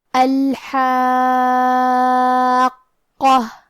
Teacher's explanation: کلمت الحاقہ میں حرف الحاء کی ادائیگی حلق کے درمیان والے حصے سے ہے · پھر اس کے بعد الف پہ مد کا علامہ ہے. یہ مد لازم کلمہ مثقل ہے، لہذا ہم اپنی آواز 6 مد کے برابر لمبی کریں گے. · پھر یہاں حرف القاف ہے. حرف القاف کی ادائیگی زبان کے جڑ اور تالو کے نرم حصے سے ہے.